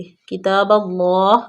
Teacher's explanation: اللہ کے لام کو پر پڑھیں گے